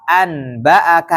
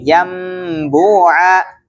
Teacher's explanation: Cara membacanya diubah menjadi mim. Ya, dibaca mim dengan tempo gunnah. Nah, dengan tempo gunnah yang dipanjangkan. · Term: Iklab